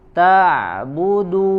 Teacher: Kita latih lagi huruf ain, sempurnakan, kita usahakan biar maksimal tidak mengeluarkan suaranya dari rongga hidung